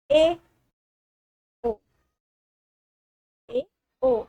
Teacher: अर्ध समृद्ध स्वर में मतलब आधा बंद, जो आपका मुख द्वार होगा वो आधा बंद होगा और आधा खुला होगा, आधा बंद होगा।